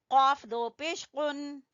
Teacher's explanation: जबान की जड़ से कौफ